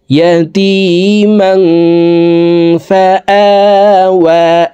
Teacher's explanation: এই তানউইনওয়ালা মিমটি অর্থাৎ জবরওয়ালা 2 জবরওয়ালা মিমটি নাকের ভিতরে লুকাইয়া গুন্নার সহিত পড়ব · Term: ইকফাহ গুন্নাহ